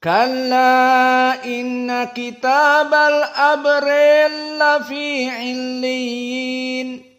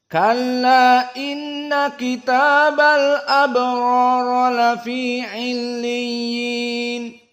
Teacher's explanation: tidak ada masuk kepada ra sama sekali, tetapi langsung masuk kepada lam karena idgham al-kabir